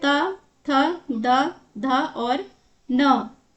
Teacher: त वर्ग का जो भी व्यंजन है उसे दंत उनका उच्चारण स्थान होगा। जैसे कि त बोलते हैं जो हमारी जीभ का आगे का हिस्सा है दांत से टकराता है तो यह त वर्ग का व्यंजन हो गया और ये इनका उच्चारण स्थान दंत या फिर दांत है।